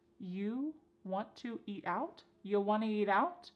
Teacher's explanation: We've dropped the question word completely.